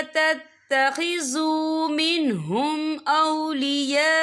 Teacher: ये मद जो है मद मुत्तसिल है, इसकी मिकदार 4 हरकत के बराबर है, तो हम इसे 4 हरकत के बराबर खींच के पढ़ेंगे।